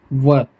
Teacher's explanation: वर्ण जो होते हैं दांत और ओठ को मिलाकर जिनका कॉम्बिनेशन दांत और ओठ से कॉम्बिनेशन से जिसका उच्चारण होता है वह एक ही वर्ण है व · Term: दंतोष्ठ वर्ण